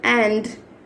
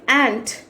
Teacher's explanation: But while pronouncing D and T sounds, make sure if you are pronouncing D sound, your vocal cord should vibrate